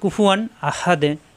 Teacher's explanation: তানবিনকে কোনো গুণা করা যাবে না, স্পষ্ট পড়তে হবে, এখানে যেরকম আছে সেরকমই পড়তে হবে। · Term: ইজহার